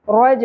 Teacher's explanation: رو پر ہوگا جیم ساکن پہ قلقلہ ہوگا